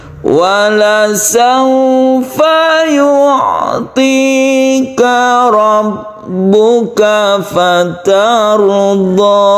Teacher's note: Jadi yang belakangnya itu merendah.